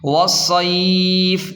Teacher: وقف کا طریقہ کار یہ ہے کہ وقف کی صورت میں آخری لفظ والصیف کی فا ساکن ہو جائے گی، والصیف، اس طرح۔